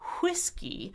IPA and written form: ˈʰwɪs ki (whiskey)